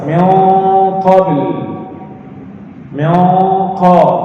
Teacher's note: Ikhfa bersama huruf qaf gunnah tebal. Karena huruf qaf itu huruf isti'la. Seperti miau dari hidung dari atas, miau qabil, miau qa.